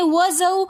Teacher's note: وَزَوْ، زا حروف صفیریہ حروفوں میں سے آ رہا ہے تو زا کو ہم نے سیٹی کے ساتھ پڑھنا ہے۔ وَزَوْ، واو ساکن اس سے پہلے زبر ہے تو واولین ہونے کی وجہ سے ہم نے یہاں پر غنہ نہیں کرنا۔